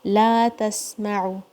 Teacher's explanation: لا تسمعوا، تا کے اوپر فتحہ ہے، سین کو آپ نے صفیر کے ساتھ ادا کرنا ہے. اس میں ہمس بھی ہے اور ساؤنڈ فلو ہوگی، اس میں رخاوہ بھی ہے